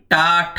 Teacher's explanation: जब आप टा ठा बोलते हैं तो आपकी जो जिह्वा है दोस्तों वह अंदर की ओर थोड़ा मुड़ जाती है, यानी दोस्तों ये मूर्धन्य ध्वनियां हैं।